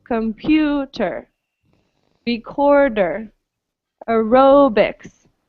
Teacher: these e sounds are not on the stressed syllable · the E is pronounced as a schwa, right? As the neutral vowel.